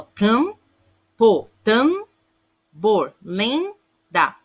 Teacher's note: esse M e esse N está aí para dar um som nasal para a vogal anterior. Nesse caso, não é considerado encontro consonantal, porque ele tem uma função de estar aí, não é para ter esse encontro.